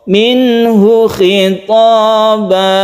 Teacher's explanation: hunya ini tidak panjang, langsungkan ke kha